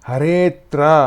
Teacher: ಇಲ್ಲಿರುವ ಅವರ್ಣವು ಲೀನಗೊಂಡು ಹರೇತ್ರ ಎಂದು ಆಗುತ್ತದೆ. ಇದನ್ನು ಉಚ್ಚರಿಸುವುದು ಹರೇತ್ರ ಎಂದು. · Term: ಪೂರ್ವರೂಪ ಸಂಧಿ